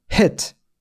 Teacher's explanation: 근데 단모음 버전 옆에 땡땡이 없으면요. 얘는 우리나라 말 E와 의의 중간 소리입니다